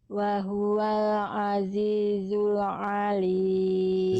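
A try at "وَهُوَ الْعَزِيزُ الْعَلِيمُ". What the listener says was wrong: Zainya jelaskan desisannya. lebahnya jelaskan. Azizu. Zai harus berdesis dengan karakter kayak bunyi lebah tadi karena dia punya sifat sofir namanya. dijelaskan Azizul Alim.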